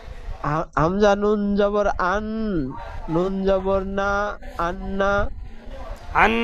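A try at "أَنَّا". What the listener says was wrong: আন্না, গুন্না হচ্ছে না। আন্না, আমি যেরকম বলছি শোনেন প্রথমে, হামজা নুন জবর আন, নুন জবর না, আন্না, গুন্নাটা বেশি করে করতে হবে। নুনের উপর তাসদিদ আছে।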